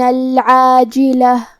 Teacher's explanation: عین کی ادائیگی حلق کے درمیان والے حصے سے ہے. آخری میں تاء مدورہ ہے، ہم یہ کلمہ پہ رکیں گے تو تاء مدورہ پہ ہا سے رکیں گے.